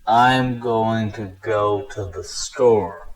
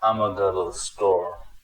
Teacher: replaced the words i am going to with ima and then replaced almost all of the vowels in the sentence with the uh sound